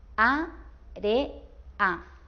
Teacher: la e y la a últimas están juntas, pero lo pronunciamos separados, o sea, están en dos sílabas diferentes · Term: hiato